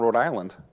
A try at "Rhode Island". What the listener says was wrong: Yeah, yes, because there wasn't one R that was pronounced correctly. You guys just forget half the alphabet.